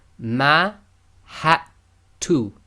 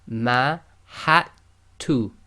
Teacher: The dal is sakin, so in this case we're going to totally ignore the dal